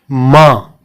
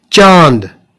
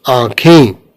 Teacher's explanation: अनुनासिक स्वरों के उच्चारण में मुंह से अधिक तथा नाक से बहुत कम सांस निकलती है।